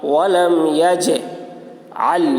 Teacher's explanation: جیم حروف قلقلہ میں سے ہے اور اس پر جزم ہے، اس لیے جیم میں قلقلہ ہوگا